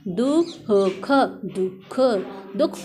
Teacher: दुख के बाद ह की साउंड आएगी इसलिए हमने विसर्ग लगाया।